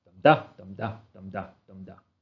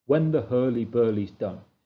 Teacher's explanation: It's simply 4 stressed syllables followed by 4 unstressed syllables in pairs. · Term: Trochaic Tetrameter